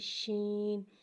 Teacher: خا حرف مستعلیہ ہے، اس لیے لہٰذا سے ہم موٹا پڑھیں گے، یعنی کہ اس کی آواز الگ سے موٹی ادا ہوتی ہے۔ شین، شین کو ایک الف 3 مقدار کھینچ کے پڑھتے ہیں اور شین میں توشی والی سیٹی کو ظاہر کریں گے